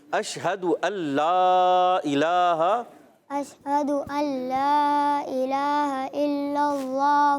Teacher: ادغام بلا غنہ، تو یہاں پر نون کی ادائیگی نہیں ہوگی